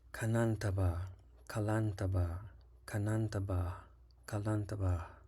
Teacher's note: The second syllable has a high or descending tone.